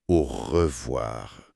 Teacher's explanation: Ça donnerait quelque chose comme au revoir, un petit frôlement au fond de la gorge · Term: consonne fricative uvulaire